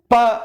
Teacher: இந்த சொற்களை உச்சரிக்கும் போது நீங்களே உச்சரித்துப் பாருங்கள் ப என்று சொல்லும் பொழுது இரண்டு உதடுகளும் ஒன்று சேர்ந்து அதாவது மேல் கீழ் இரண்டு உதட்டுப் பகுதிகளும் ஒன்று சேர்ந்துதான் இந்த ஒலி உருவாகின்றது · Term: ஓஸ்டஜ